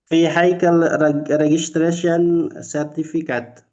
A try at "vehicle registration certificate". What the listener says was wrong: Oke, sudah betul, Bapak.